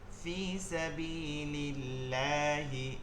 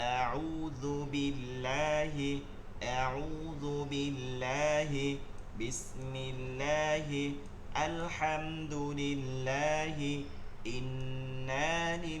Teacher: থাকলে জের থাকলে ওই লামকে বারিক বা চিকন করে পড়তে হয় জের থাকলে বারিক বা চিকন করে পড়তে হয়